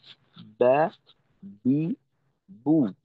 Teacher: বা হবে দুই ঠোঁটের ভেজা জায়গা থেকে, অর্থাৎ স্বাভাবিক অবস্থাতে উপরের ঠোঁট নিচের ঠোঁটের সঙ্গে যেভাবে লেগে থাকে ওইভাবেই উচ্চারিত হবে